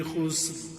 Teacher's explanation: خسر اس میں سین باریک ہے، لیکن را کو پھر ہم پر پڑھ رہے ہیں، اس لیے کہ را ساکن اس پر ہم نے وقف کیا ہے، پھر سین ساکن اور اس سے پہلے والے حرف پر پیش ہے.